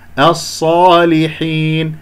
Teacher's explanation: لا تجعل غنة في هذه الياء بأن تخفض الفك السفلي قليلا حتى لا يتصاعد الصوت عندك إلى الخيشوم، وتغلق فتحتي الأنف وتتدرب عليها.